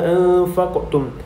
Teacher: Seterusnya pada kalimah anfaqtum, huruf qaf tersebut merupakan huruf qalqalah sughra yang mana perlu dibaca dengan lantunan yang sedikit sahaja